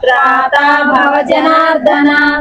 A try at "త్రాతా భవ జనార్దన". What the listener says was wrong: జనార్దనలో ఒత్తు లేదు జనార్దన ఒత్తు అక్షరం కాదు చెప్పండి